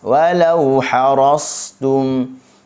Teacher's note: huruf ra tebal. Okey, buka mulut baris atas.